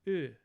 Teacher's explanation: you just keep the tongue exactly where it is for that vowel and just unround your lips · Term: unrounded high back vowels